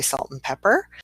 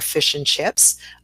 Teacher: so the and becomes n